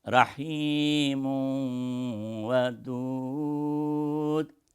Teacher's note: And then Wadud starts with Waw, which is one of the members of Yanmu, 4 letters. So, Waw will be assimilated with ghunnah.